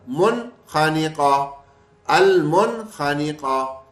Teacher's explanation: نون کو ظاہر کر کے بس پڑھ لیں گے، غنہ نہیں کریں گے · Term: اظہار